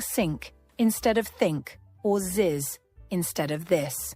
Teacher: learners often replace it with s or z saying sink instead of think or ziz instead of this